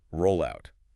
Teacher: the double L in roll slides right over into the O of out, roll out. It becomes one word. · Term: phonetic link